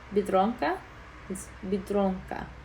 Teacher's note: You're putting the like emphasis on that second syllable because it's the second to last.